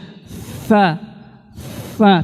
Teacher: Desis ya, atau sofir istilahnya. Huruf sa nggak ada desisnya.